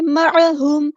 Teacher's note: لما، الف مد آ گیا تو مد اصلی کریں گے. معہم، عین کو وسطی حلق مڈل تھروٹ سے ادا کریں گے